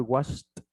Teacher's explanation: Aquí le agregamos una especie de T al final, pero no suena ed, es washed como T.